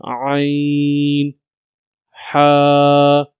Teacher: From the middle part of the throat, we read ain and ha.